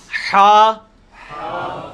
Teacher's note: حلوائی والا جو ہا ہے، یہ وسط حلق سے یعنی حلق کے درمیان سے نکلتا ہے. یہ کبھی آپ وہ گلے والی ٹافی کھائیں نا، وہ والی آواز ایکزیکٹ بالکل کلیئر وہاں سے جو نکلتی ہے نا، یہ ہا کا مخرج وہی ہے.